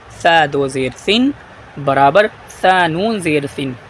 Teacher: سین میں ہلکی سی سیٹی کی آواز آتی ہے، سا میں جو ہے زبان کی نوک کو جو ہے سامنے والے دانتوں پر لگاتے ہیں، آگے والے۔ سا 2 زیر سن برابر سا نون زیر سن۔